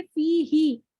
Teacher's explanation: फी क्या कहेंगे कि हर्फ मद्दा है और ये 2 हरकत मद्दा है, 2 काउंट तक खींचेंगे इसको